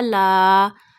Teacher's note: When fatah come before alif, then you stretch alif up to one alif. Lam alif fatah la. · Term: alif madda